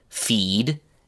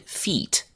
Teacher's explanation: In each pair of words, the two words are the same except that one of them has a voiced sound at the end and the other has an unvoiced sound